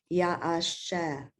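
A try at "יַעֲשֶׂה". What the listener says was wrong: That letter has a dot. Yeah, se. The dot is on the left, so it's a sin.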